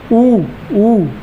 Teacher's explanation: ओठ का जो आकार है ना वो गोल हो जाता है इसमें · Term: छोटा ऊ और बड़ा ऊ